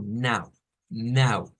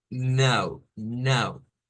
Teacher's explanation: se parecería a decir algo como Now now pero nasal esa a nasal